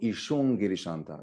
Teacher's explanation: anusvara should change into the nasal pair for that group, which is ishung girishanta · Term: anusvara plus velar